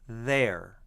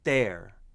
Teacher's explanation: with a low relaxed tongue there with a lifted tongue blocking the airflow there